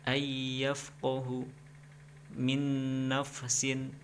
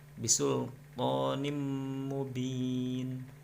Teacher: Artinya adalah apabila ada nun mati dan tanwin bertemu dengan salah satu huruf idgham bi ghunna, maka cara membacanya adalah dengan dibaca dengung, yaitu memasukkan dan dengungnya sebanyak 2 harokat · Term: idgham bi ghunah